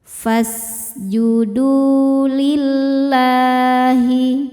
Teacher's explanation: Lam jalalah dibaca secara tarqik karena harakat sebelumnya kasrah. Cara bacanya lam ini dibaca dengan tipis. Lillahi la ada hukum madnya juga namanya mad thobi'i muqaddar.